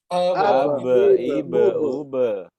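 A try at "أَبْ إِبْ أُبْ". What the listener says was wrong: Ya, jadi ke e. Qalqalahnya nggak boleh ada seperti hamzah disukunkan di ujung. Abe, ibe, ube. Nggak boleh. Abe, ibe, ube. Ya, dan harus bunyi e. Jangan ditahan-tahan. Abe, ibe, ube. Abe, ibe, ube.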